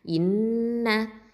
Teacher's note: இப்போது ஹம்சா கெஸ்ரா நூன் ஷத்தா இன், நூன் ஃபத்ஹா இன்ன, இந்த இடத்துல நூனுக்கு அக்மல் குன்னா கொடுக்கணும்